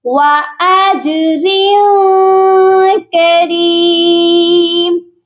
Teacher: وَأَجْرٍ کریم اس والی را کی تنوین پر اخفا کریں گے